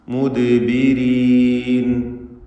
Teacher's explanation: റാഇന് കസ്റ അതുകൊണ്ട് തർക്കീഖാണ്.